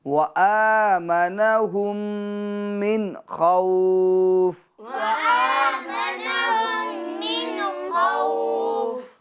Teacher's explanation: من خوف میں گنہ نہیں ہوگا بلکہ اظہار ہوگا